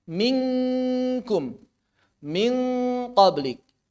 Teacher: ketika bertemu dengan kaf dan qof langsung saja tempelkan seperti saat mengucapkan eng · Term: ikhfa, ab'ad